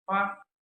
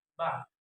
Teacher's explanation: The difference between the sound pa and ba is the sound pa doesn't vibrate or voiceless, while the sound ba vibrates or voice.